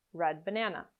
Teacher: Or you might pronounce a glottal consonant, where you put your tongue into position to make a D sound, but you never release it